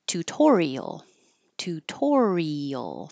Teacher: this is a good example of the I and the a going in separate syllables and being heard individually